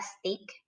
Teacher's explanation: Lalu kalau di kata stick, di sini tidak terdapat aspirasinya.